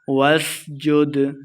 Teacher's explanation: دال حروف قلقلہ سے ہے، ساکن ہے تو خوب واضح ہو رہا